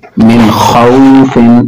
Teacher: نون ساکن کے بعد خا حروف حلقی ہے تو ظاہر کر کے پڑھیں گے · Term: اظہار